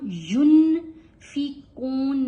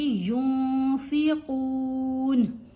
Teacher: نون کی آواز ناک میں چھپا کے پڑی جائے گی